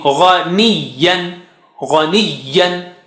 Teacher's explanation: Gha is high sounding.